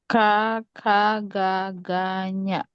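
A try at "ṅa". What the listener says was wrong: not nya,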